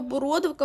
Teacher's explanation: бородовка у нас особлива має наголос на другому складі